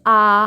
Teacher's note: Completely open, okay दोस्तों। विवृत स्वर में क्या है, आपका मुंह कंप्लीटली ओपन रहेगा। ऐसे आ, जब आप आ बोलते हो तो क्या होता है, आपका मुंह पूरा खुलता है ना।